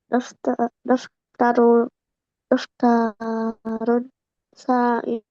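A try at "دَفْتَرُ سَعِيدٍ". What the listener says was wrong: Ya, tanwinnya dihilangkan sekarang. Daftaru sa'idin.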